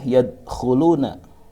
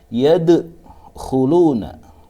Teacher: Dengan cara baca tidak boleh yadkhuluna, tetapi harus diqalqalahkan karena di sini huruf qalqalah mati, maka ini dinamakan qalqalah sughra. Dengan bacaan memantulkan huruf dal, huruf qalqalahnya dipantulkan dengan cara baca yadkhuluna.